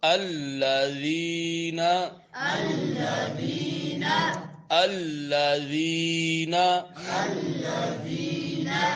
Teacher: زبان کی نوک سامنے والے دو دانتوں کے کناروں سے ٹکرے گی تو ذال پڑھا جائے گا